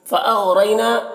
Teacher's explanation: यहाँ पर गैन को पुर पढ़ेंगे और रई में रॉ को पुर पढ़ेंगे और या मद्दा है एक अलिफ के बराबर खींचेंगे। · रई में या लीन है तो इसे नर्म आवाज़ के साथ जल्द पढ़ेंगे